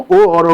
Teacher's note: ओ और ओ का उच्चारण स्थान कंठ और ओठ से होता है, इसलिए कंठोष्ठ कहते हैं।